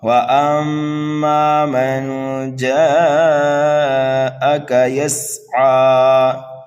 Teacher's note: جیم کو کھینچیں گے 2.5 الف کے برابر، سین کو سیٹی کی آواز دیں گے، یسعا پر جب وقف · الف مدہ کے بعد میں حمزہ اسی کلمے میں آنے کی وجہ سے یہاں پر مد متصل ہوگا